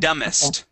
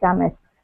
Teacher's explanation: Okay, that B is going to be silent. Silent. Dumbest.